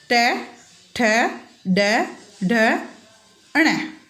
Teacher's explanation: ट, ट वर्ग, ट वर्ग का उच्चारण मूर्धा से किया जाता है। जिह्वा जब मुंह के अंदर उभरे हुए भाग से टकराती है तब इनका उच्चारण होता है